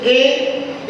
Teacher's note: ए बोले तो हमारी जिह्वा का अग्र भाग सक्रिय हो रहा है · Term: अग्र स्वर